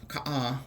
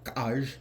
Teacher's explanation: it's made with that same type of K sound, but it's a glottalized version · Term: glottalized K sound